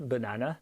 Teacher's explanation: le A qui est au milieu, dans la syllabe forte, la syllabe accentuée, va effectivement se prononcer A alors que les autres seront plutôt vers le E. Banane. Pour terminer, abordons le sujet qui fâche.